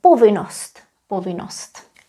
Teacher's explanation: here curiously we still write double n we do not pronounce them anymore